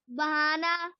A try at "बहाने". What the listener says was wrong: बहाना नहीं यहाँ देखिए मात्रा को देखिए, बहाने हैं ना, पर एक ही मात्रा है।